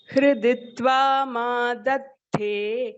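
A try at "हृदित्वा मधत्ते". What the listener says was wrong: Dha is Mahaprana. Hriditva madhatte. Ta is Alpa Prana, only dha is Mahaprana.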